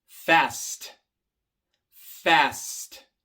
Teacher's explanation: Viene antes de la T. La T es una consonante sorda. Se pronuncia sin usar las cuerdas vocales